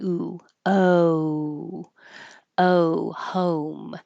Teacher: the American English o home is not just an O, but it changes positions. You're starting with more of an H sound.